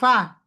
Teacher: উপরের দাঁত, নিচের ঠোঁটের ভেজা অংশ। আমাদের কি হয়, দুই ঠোঁট লেগে যায়।